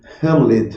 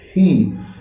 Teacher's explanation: O el pronombre de tercera persona en inglés, he, que es un sonido aspirado que se articula en la glotis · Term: fricativa aspirada